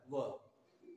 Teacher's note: यानी दांत और होठ दोनों के कॉम्बिनेशन से ये व का उच्चारण होता है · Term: दंतोष्ठ